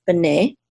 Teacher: the accent is on the second syllable because this is a trope mark right here.